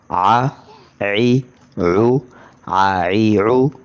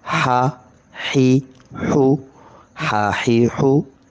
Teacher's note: تو اس کے بعد گلے کے درمیان والے، تو گلے کے بالکل درمیان سے آواز پیدا ہو